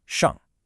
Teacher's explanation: The second syllable, shang, is a light, neutral tone, so it's much quicker